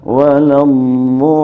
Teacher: huruf dhad termasuk huruf rukhawah. Artinya suaranya tidak keras, empuk, berjalan kalau sedang bertasydid.